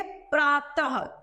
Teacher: तो त के पीछे हमने विसर्ग का प्रयोग किया, तो हमने उच्चारण ह के रूप में किया